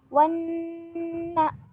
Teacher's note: Wanna. Nah, ini nun bertasydid namanya gunnah ya. Dan ini dibaca 3 harokat. Jadi teman-teman harus membacanya 3 harokat, nggak boleh kurang ataupun lebih.